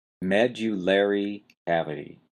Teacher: got a strong stress on the first syllable Med and then you've got a lesser stress on the third syllable Lair medular cavity well what is a medular cavity well that's located